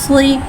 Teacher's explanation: सौद हुर्फ़े मुस्तआलिया है, लिहाजा इसकी आवाज़ हलक से मोटी अदा होगी। सौद में सीटी को ज़ाहिर करके पढ़ेंगे और सौद में दाल में कलकला को ज़ाहिर करके पढ़ेंगे।